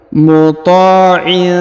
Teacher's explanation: huruf ta dipanjangkan 2 harokat karena di depannya terdapat alif. Muta'in. Kemudian huruf tanwin in pada huruf in bertemu dengan huruf tha, maka didengungkan dan disamarkan.